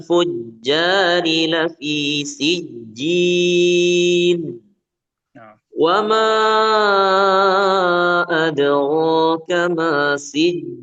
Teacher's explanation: huruf jim mohon untuk diperhatikan jangan ada angin yang keluar ya. Karena huruf jim sifatnya kan apa? Jahar ya. Iya, bukan hams.